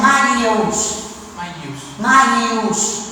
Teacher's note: Al pensar que hay ahí otra vocal, hace que la A se alargue. Al haber dos vocales, una se reduce, pero hace que la primera sílaba se alargue.